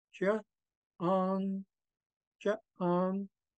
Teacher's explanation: Notice the difference between ja and ong. You could really hear it going from low tone to high tone.